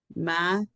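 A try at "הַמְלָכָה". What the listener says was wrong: No, it doesn't start with an M. It starts with a what? What's the new letter? Hey. holy hay. The holy hay.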